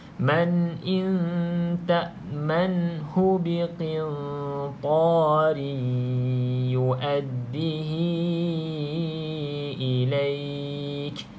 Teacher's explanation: Kita masukkan idgham tu, maksudnya memasukkan ke dalam huruf ya ni dengan gunnah 2 harakat. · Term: idgham ma'al gunnah